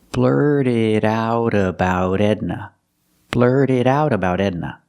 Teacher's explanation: We see the T in about is between vowels, so that T changes to a fast D too.